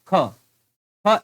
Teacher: इस स्पर्श भी है कंठ भी है अघोष भी है और महाप्राण भी है